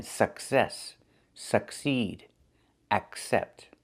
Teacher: Remember, with these words, you see the double C, we pronounce the first C as a K and the second C as S.